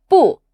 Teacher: 不 is normally with the falling tone